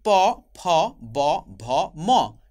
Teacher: আমরা যখন বলছি প, ফ, ব, ভ, ম, সবগুলির উচ্চারণ স্থান হলো ঠোঁট। এজন্য আমরা বলছি ওষ্ঠধ্বনি বা ওষ্ঠবর্ণ।